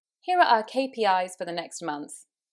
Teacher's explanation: There's something that sounds much more certain and definite about falling at the end.